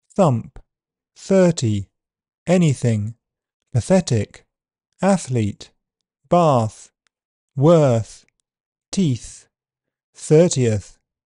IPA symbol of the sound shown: θ